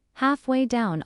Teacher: stress is on half and down